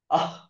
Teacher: ಜಿಹ್ವಾ ಅಂದ್ರೆ ನಾಲಿಗೆ ನಾಲಿಗೆಯ ಬಾಟಮ್ ಅಲ್ಲಿ ಸ್ಟಾರ್ಟಿಂಗ್ ಪಾರ್ಟ್ ಅಲ್ಲಿ ಅದು ಹುಟ್ಟುತ್ತೆ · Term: ಜಿಹ್ವಾ ಮೂಲಿಯ